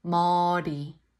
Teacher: the tongue Taps on top of the roof